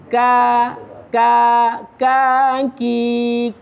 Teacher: Tempat keluarnya ee berdekatan dengan huruf qof. yaitu ada di pangkal lidah juga, hanya saja agak keluar sedikit. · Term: huruf kaf